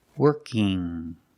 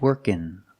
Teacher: I have ing, where I make the sound in my nose, working. Or I can make the N sound, workin'.